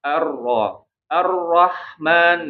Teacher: ro itu harus ada getar tapi getarannya jangan terlalu banyak